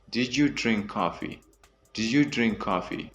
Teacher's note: the D and Y is converted into like a J sound